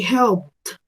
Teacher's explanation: Yo esa ed en pronunciación la voy a cambiar por una T.